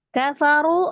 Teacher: Kafaru, runya mad, ada waw sukun sebelumnya dhamma di huruf ra. Ru dibaca 2 harakat, alifnya dianggap tidak ada, alif sifar ya.